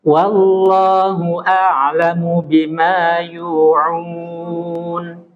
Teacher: Yang tebal itu di lam lafzul jalalahnya.